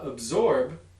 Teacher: absorb pretty clearly has a final voiced labial stop in it